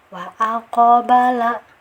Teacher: karena sukun dia ada sifat qalqalah ya, jadi harus ada pantulan kecil saja ya.